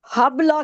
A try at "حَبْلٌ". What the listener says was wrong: حبلہ کیوں ہوگا؟ لام پر دو پیش ہیں, ساکن کرنا ہے, دو زبر تھوڑی ہیں. لام بھی ساکن کرے نا. لام کو بھی ساکن کرے نا, با کی طرح دو پیش ہیں, دو زیر, دو پیش, زبر زیر پیش, آخری حرف کے اوپر نیچے آئے اس کو ساکن کرنا ہے.